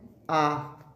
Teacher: विपरीत स्वर, इसमें मुख जो है पूरा खुला होता है।